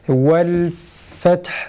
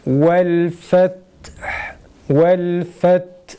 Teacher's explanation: Yalnız vel feth kelimesinde ta'dan önce nefes kesilsin.